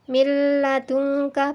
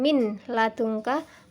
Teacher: bacaan nun mati atau tanwin tersebut hilang dan lebur dengan huruf sesudahnya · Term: idgham bilagunnah